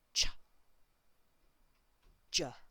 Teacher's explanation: This one here, the voiced one, is j. So the mouth, the tongue are the same, but there's movement in the throat